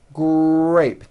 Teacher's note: the R sound is stronger and you even hear it more than the G sound